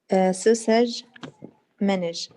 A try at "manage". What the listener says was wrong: You changed. It's not the same. الأربع الأولاد قلتيهم زي بعض بعدين زخرات غيرتي. They are the same. All of them. The same sound in the end.